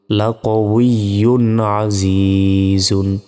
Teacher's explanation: এটা তানবিন তানবিনের পর দেখতে হবে ইজারের অক্ষর এসেছে কিনা হ্যাঁ তানবিনের পর ইজারের অক্ষর আইন এসেছে এই যে আইন এই আইন আসার কারণে এখানে আর গুন্না হবে না